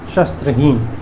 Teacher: तालव्य श, स्त्र नहीं, दंत स और त्र का संयुक्त